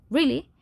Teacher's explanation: really, with rising intonation, the speaker may express surprise or ask for confirmation.